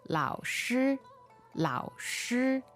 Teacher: So third tone, first tone, right?